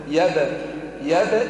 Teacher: أولا قلقلوا الباء ساكنة